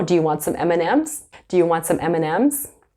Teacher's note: in our day-to-day life, we don't pronounce the D sometimes.